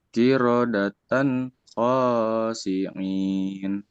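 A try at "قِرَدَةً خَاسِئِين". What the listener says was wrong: Ini bukan ain ya, hamzah.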